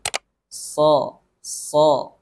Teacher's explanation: Makharijul huruf shad yakninya adalah ujung lidah sejajar dengan gigi seri bawah, atau ada yang menyebutkan agak cenderung ke bawah sedikit.